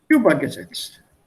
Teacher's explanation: If I take this here, then I will say übergesetzt. I put the stress on the first one.